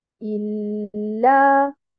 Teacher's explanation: donc nous avons un nabr sur harakat al-hamza, in, Et nous avons un nabr sur harakat al-lam